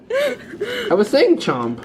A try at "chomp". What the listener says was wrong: No, you were saying chomp. It was coming out chump. Like, you're a chump.